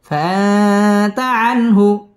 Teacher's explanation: ইকফা এখানে গুন্নাহ করে পড়তে হবে